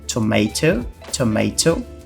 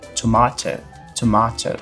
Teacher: no inglês americano a gente tem esse A um pouco mais longo, com som de A, tomato, tomato, enquanto que no inglês britânico a gente tem esse A um pouco mais grave